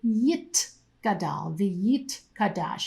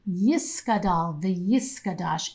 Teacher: A modern-day Hebrew speaker would say Yit Gadal v'yit kadash. You can hear that there's a t sound instead of a s sound.